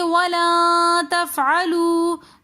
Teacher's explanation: نون ساکن کے بعد اخفا کے 15 حروفوں میں سے تا آ رہا ہے تو اس لیے ہم یہاں پر دوبارہ اخفا کر کے پڑھیں گے